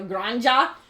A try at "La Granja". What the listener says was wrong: Ha! Ha! J is ha. Ha! Gran ha! La Gra.